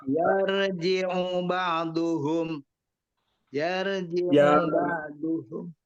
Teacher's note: U-nya tidak panjang, ila langsung saja.